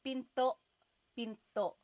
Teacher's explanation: Do you hear the glottal stop when I say pinto?